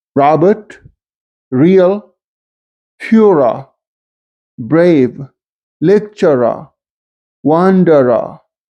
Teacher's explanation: This rhotic R is pronounced if it occurs before a vowel.